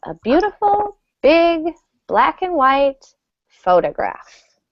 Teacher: So a phrase like this, your intonation will stay pretty high throughout the phrase.